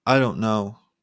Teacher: your voice Rises slowly showing hesitation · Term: upward pitch